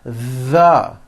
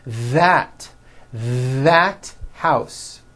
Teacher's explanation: That's the voiced TH. You should be able to feel a strong vibration in your throat and on your tongue.